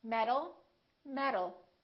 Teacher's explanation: word metal metal these two sounds sound exactly the same because the tea changes into a d when it's between two vowels